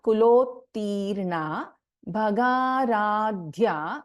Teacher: ध is a महाप्राण अक्षर